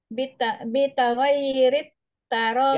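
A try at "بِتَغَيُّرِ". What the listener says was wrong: Ya-nya dhammah. Ya-nya, huruf ya-nya dhammah,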